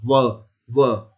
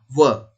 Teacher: ऊपर के दांत व निचला होंठ जब मिलता है तो इस तरीके से हम व का उच्चारण करते हैं